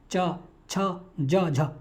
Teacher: स्पर्श होकर के निकलते हैं और संघर्ष करते हैं बीच में · तो कोमल तालु ऊपर उठा है। जिव्हा नोक कठोर तालु के अग्र भाग को छूती है। जी्हा की जो नोक है वो कठोर तालु जो है हमारा ऊपर वाला जो तालु है उसके अग्र भाग को छूती है। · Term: स्पर्श संघर्षी वर्ण, स्पर्श संघर्षी